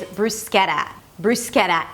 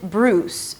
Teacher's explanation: It's a B sound, an R, round your lips for the R.